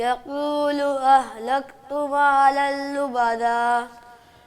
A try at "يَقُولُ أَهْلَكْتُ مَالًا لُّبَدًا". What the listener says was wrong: جلدی کر رہے ہو تھوڑا.